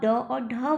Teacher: और एक चीज़ आपको याद रखना है कि जब आप ड और ढ का प्रयोग करेंगे, यानी जब आप ड और ढ बोलेंगे, तो क्या होगा, जिह्वा पलट के जा रही है और तालु को स्पर्श कर रही है, तो ये मूर्धन्य के अंतर्गत आ जाती है। पर आप जब इसके नीचे बिंदी लगा देते, यानी कि ड और अढ़ा बोलेंगे, तो जिह्वा झटके से बाहर की तरफ आती है, इसीलिए इसे उत्क्षिप्त कहते हैं।